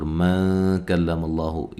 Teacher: یہاں نون ساکن کا اخفا ہو رہا ہے، باریک اخفا ہے۔ کلا، کاف کو باریک، ماللہ، لفظ اللہ کو موٹا ادا کریں گے، اس سے پہلے حرف پر زبر ہے۔